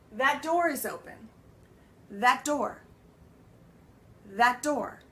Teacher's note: That door." Do you hear how it runs together? The T and the D end up becoming one sound · The T and the D end up becoming one sound. That door. So it no longer separates because it's a similar sound.